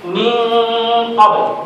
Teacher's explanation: Kalau huruf selepas daripadanya tebal, contohnya macam qaf, min qabl, dengungnya juga bunyinya tebal.